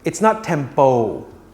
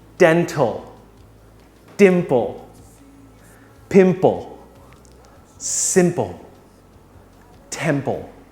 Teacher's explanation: The ending is not po, but a short version of pull.